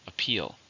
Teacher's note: How many syllables in the word appeal? 2, stress on the second.